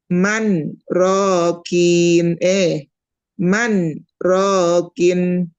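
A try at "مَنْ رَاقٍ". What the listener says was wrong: Itu mamanya nggak berhenti. kan berhenti 2 harokat. Man, ro.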